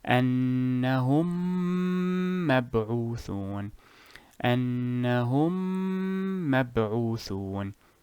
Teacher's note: You simply add an extra emphasis to fuse the 2 memes together. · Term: idgham